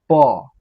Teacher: जो हमारा जो ओठ है ओष्ठ दोनों क्या हो जाता है? आपस में सट जाता है।